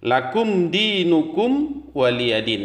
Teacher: lakum di mim mati bertemu dengan dalam dibaca izhar syafawi artinya dibaca jelas